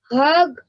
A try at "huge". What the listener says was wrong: Huge. Hug is H-U-G is hug, and then when you add a magic E, it becomes huge. Huge.